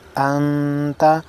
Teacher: नून साकिन है, इसके बाद हुरूफ इख्फा है, गुन्ना करेंगे